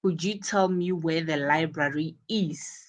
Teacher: notice that the library is stressed because it is the word with important information. Library is stressed because it is the one that carries information that is important.